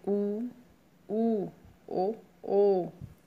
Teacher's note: जिन स्वरों के उच्चारण में होंठ वृत्तमुखी या गोलाकार हो जाते हैं वो वृत्तमुखी स्वर कहलाते हैं